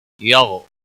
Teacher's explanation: غائن پر قلقلہ نہیں ہونا چاہیے، اور غائن کو موٹا بھی پڑھنا ہے۔